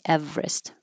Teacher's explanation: we don't say this middle E, we make it shorter. Instead of Everest, we shorten it and say Everest, but both are fine.